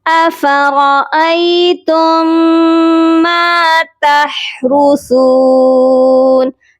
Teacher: ہا کی آواز حلق سے آئے گی اور سا کو نرمی سے پڑھا جائے گا · تا کو میم مشدد کے ساتھ ملائیں گے اور غنہ کریں گے، درمیان میں میم ساکن کو ہم چھوڑ دیں گے